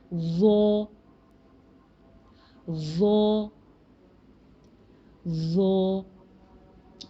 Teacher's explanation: वो heavy letter है, मोटा हर्फ है, तो ज़ुबान पीछे से भी ऊपर उठ रही है, पर टिप वहीं लगेगी जहाँ जाल के लिए लगाई थी, ठीक है। · आपकी ज़ुबान की जो टिप है ये आपके ऊपर वाले दो दांतों के एज पे लगेगी